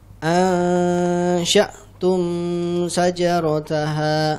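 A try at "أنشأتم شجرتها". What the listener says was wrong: Nah, untuk sya'tum sajarataha, tumnya jangan dipanjangkan ya, itu izhar syafawi. Ansha'tum, siap-siap ke Shin.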